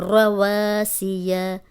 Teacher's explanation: صرف الف مدہ لمبا ہو رہا ہے